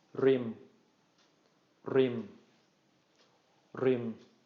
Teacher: so this is gonna be pronounced as a short mid-tone